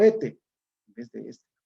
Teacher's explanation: aspiración o pérdida del fonema S en posición implosiva, final de la sílaba o de la palabra